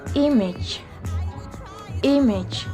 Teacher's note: J. Jadi konsonan ini tergolong dalam palato alveolar, afrikatif, serta voice sound.